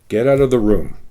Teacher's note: The statement, the sound of the voice goes down. It makes it seem more ominous or more firm. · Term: tone going down